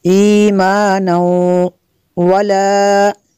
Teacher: تنوین کے بعد حروف ارملون میں سے واو ہے، یہاں پہ ادغام ہوگا اس لیے یہاں پہ غنہ کریں گے۔